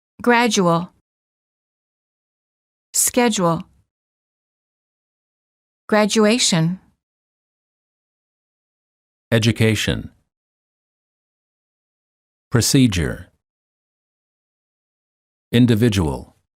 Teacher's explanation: d plus u is usually pronounced as j as in the word joke